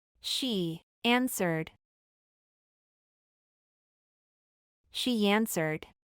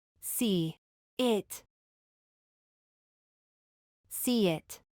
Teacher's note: se suele adicionar el sonido de la Y, cuando es pronunciada en palabras como yes, pero acortando un poco su pronunciación